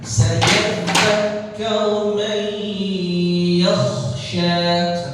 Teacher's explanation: Nun mati bertemu dengan ya, idgham di gunnah. Ya, jadi ditahan.